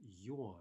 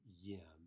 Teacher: if the ending happens to be stressed, then you get, as you might well expect, yom